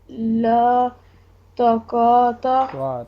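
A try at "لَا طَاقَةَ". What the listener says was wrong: تو آپ لمبا کریں بیٹا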